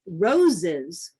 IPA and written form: roʊ.zɪz (roses)